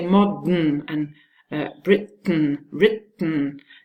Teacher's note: However, because you have to say the nasal sound, the soft palate is lowered, and still the tip and the rim of the tongue don't move, so there's no other way for the air to escape than through the nose.